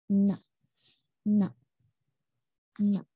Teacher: gusi dan depan lidah, tetapi keluar melalui hidung. Nasal atau hidung.